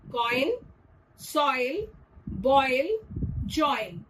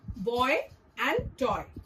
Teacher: Instead of one pure sound, the voice slides from one vowel to another. It's like your mouth is moving while speaking. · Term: Diphthongs